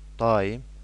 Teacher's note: burada A saiti həm uzanır, daim, eyni zamanda A-nın vurğu altında deyilməsi də hiss edilir